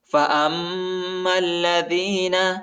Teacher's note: حمزہ کو میم کے ساتھ ملائیں گے اور میم کو لام کے ساتھ ملائیں گے اور ادھر غنہ بھی ہے